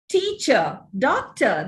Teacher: the final r is not realized. Teacher, it ends with a sure sound.